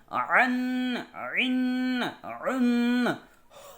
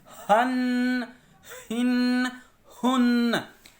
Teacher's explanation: یہ کچھ لفظ ایسے ہیں جن کو ہم حلق سے ادا کرتے ہیں